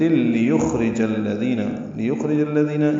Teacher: جیم کو الذین کے لام سے ملانا ہے.